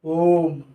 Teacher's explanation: इसके उच्चारण में हमें हस्व स्वर से तो अधिक समय लगता ही है, परंतु दीर्घ स्वर से भी क्या लग रहा है, दुगुना समय लग रहा है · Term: प्लुत स्वर